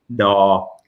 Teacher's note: da was an N with the throat closed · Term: Dodek